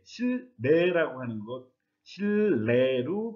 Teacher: 리을이 니은의 영향을 주어서 니은은 리을로 바뀐 것이라고 할 수 있겠네요.